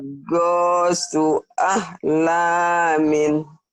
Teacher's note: Ahlamin, panjang lahnya yo. Panjang lah.